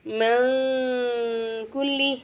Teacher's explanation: அடுத்ததான் பஸஃபீஹா மன் குல்லி நூனே சாக்கின்கிறதா கேஃப் வந்திருக்கா, நூனே சாக்கினை வந்து நம்ம என்ன செய்யணும், குன்னா செஞ்சு ஓதணும்.